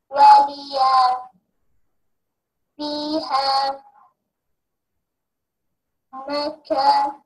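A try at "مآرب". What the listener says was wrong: ما no, it's Hamza, not Kaf. letter kaf coming in the middle of the word like this, like this, okay? But this is only Hamza. Ma'aribu.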